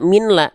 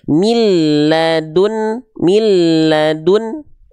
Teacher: Nun sukunnya dileburkan ya ke lam